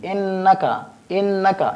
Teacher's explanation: یعنی ناک میں آواز لے جائیں گے، ایک الف کے برابر ہم اس میں غنہ کریں گے، یعنی ناک میں آواز لے جائیں گے۔